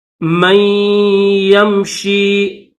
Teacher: اف من یمشی، میم کے بعد نون ساکن ہے، نون کو چھوڑ کر یا کو پڑھیں گے، میم کو یا کے ساتھ ملائیں گے لیکن یہاں پر غنہ کیا جائے گا